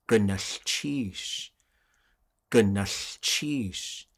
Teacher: that l sound a voiceless L right in the middle